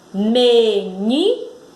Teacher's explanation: Então, houve um impulso mais forte aí no ni. Então, pintam a sílaba ni. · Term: sílaba tônica